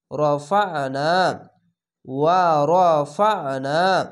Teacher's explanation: আইনটিকে মোটা করে গলা চিপে পড়বেন।